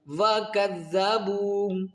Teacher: واو مدہ کو ایک الف کی مقدار کھینچ کر پڑھا جاتا ہے